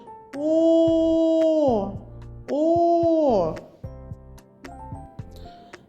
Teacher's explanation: коли ми промовляємо звук о наші губи округлені і злегка витягнуті вперед зуби наші закриті губками язичок лежить на дні ротика горло працює